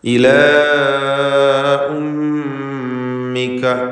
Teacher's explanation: ഫറജഅനാക ഇലാ ഉമ്മിക, ഇലാ എന്നതിലെ അലിഫിൻ്റെ ദീർഘം അലിഫ് മഖ്സൂർ എന്നാണ് അതിന് പറയുക. മദ് മുൻഫസിൽ ജായിസ് നൽകി 4-5 ഹറക്കത്തിൽ അതിനെ ദീർഘിപ്പിക്കുക.